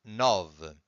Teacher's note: It's an open sound. It's a O sound.